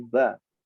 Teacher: Harakat fathah semua membaca ba. Ba menandakan bunyinya tipis, tidak bo, tapi ba, istifal.